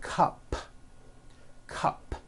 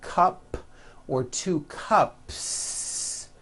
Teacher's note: if you add an S to the word cup to make it plural the S you add also remains unvoiced